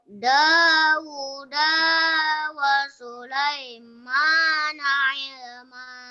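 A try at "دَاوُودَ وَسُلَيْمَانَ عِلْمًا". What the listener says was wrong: Da sama wu sudah benar, cuma da yang keduanya dipendekkan lagi nah ya. Dauda wa Sulaimana ilma. Da yang kedua pendek. Dauda wa Sulaimana ilma.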